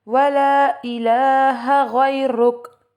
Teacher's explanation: یہاں غیرک کا را کو موٹا پڑھیں گے کیونکہ را کے اوپر پیش آ گئی